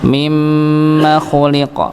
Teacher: maka jangan dipanjangkan pada huruf mim kedua